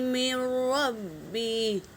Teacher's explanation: نون ساکن کے بعد را آیا ہے تو ادغام بلا غنہ ہے